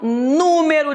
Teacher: o acento cairá na anti penúltima sílaba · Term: proparoxítona